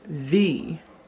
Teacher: the W in German language is pronounced V, as if a V sound in English. So a W is V.